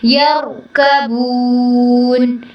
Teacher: یرکبون میں را کو پر کرنا ہے